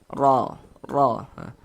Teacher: Amn wuf ro dia memiliki tanda baca fathah nih baris satu di atas huruf huruf ro kalau memiliki tanda baca fathah atau memiliki tanda baca dhammah maka huruf ra itu dibaca tabkhim dibaca tebal